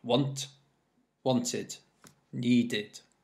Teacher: So this last ed is id. So we do pronounce the E, it's like id sound.